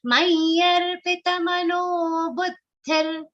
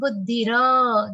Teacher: visarga is pronounced like half ra in this particular case. So do not drag that to make it a dirgha sound or a complete ra.